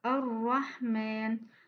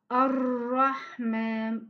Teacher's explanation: quand on prononce le mot Ar-Rahman, on fait at-takrir sans exagération